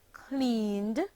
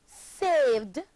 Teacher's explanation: the ed ending of voiced sounds takes on a d sound when placed at the end of verbs